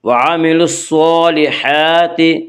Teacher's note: صاد کو پر پڑھیں گے، صاد حروف مستعلیہ میں سے ہے، حروف مستعلیہ 7 ہیں جن کا مجموعہ خص ضغ تنقیز ہے، یعنی خا صاد ضاد غین طا قاف ظا، یہ 7 حروف ہمیشہ ہر حال میں پر پڑھے جاتے ہیں۔